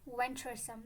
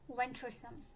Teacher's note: the stress is on the first syllable, which is venturesome.